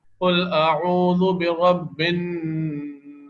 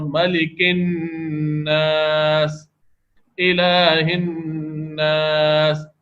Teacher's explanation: اب اس کے اندر نون کی آواز جو ہے، نون کا مخرج بھی استعمال ہوا ہے اور ناک میں آواز کو گھمایا بھی گیا ہے. اور ملک الناس، الہ الناس، یہ سب غنہ ہوتے وقت ناک میں آواز گھمائی جا رہی ہے.